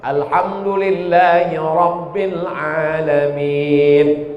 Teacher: Yang kedua, Ra. Ra-nya mesti tafkhim tebal.